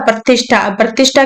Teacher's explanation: जाएगा प्रतिष्ठा प्रतिष्ठा कैसे बना कि हमने ये कहा था कि ई या उ की ध्वनि के बाद में यदि स आता है और उसके बाद में तुरंत बाद में थ आता है तो स जो है दंत स वो मूर्धन्य श में बदल जाएगा